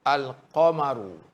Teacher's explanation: Kalau yang alif lam qamariyah diizharkan lam itu, dizahirkan lam itu, dan kita nampak bacaan lam itu. Kalau seseorang sebut alif lam qamariyah, misalnya al-qamaru, nampak lam jelas